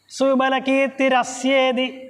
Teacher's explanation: ആ വിസർഗം മാറുമ്പോഴാണ് ഇർ വരുന്നത് അപ്പൊ ഇർ വന്നു കഴിഞ്ഞാൽ അത് അടുത്ത പദം ചേർന്ന് വരണം അപ്പൊ സുമല കീർത്തി രസ്യേതി ഇർ പ്ലസ ഏ സുമല കീർത്തിരസ്യേതി അങ്ങനെ വരണം